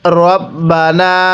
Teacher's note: এই নুনের মধ্যে আমরা 3 আলিফ টান দিব।